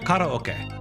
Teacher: We have this ah that then becomes an o. We don't really do that in English.